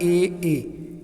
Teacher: ए देखिए कंठ और तालु, हवा आ रही है कंठ से और जीभ जा रही है तालु की ओर